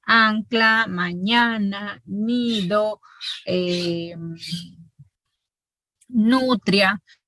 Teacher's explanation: Estas vocales que forman sílaba con estos sonidos nasales se nasalizan, porque las vocales en general son orales. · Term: nasalización